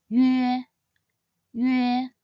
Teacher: start by sounding out the “ü” sound first, and then transit into the “eh” sound as in the word “air” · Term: compound final